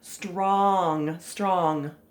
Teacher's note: and the o and g are a little tricky because the the n g sound is not really like a g so you really can't hear it very well · hear the o saying ah